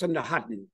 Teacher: in Bonggi, this last A is not nasalized, so it gets preploded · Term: preplosion